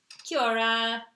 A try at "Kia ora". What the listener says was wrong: Kia ora. Kia ora? I think you like blend them together. You don't say like Kia ora. You put them together. Kia ora.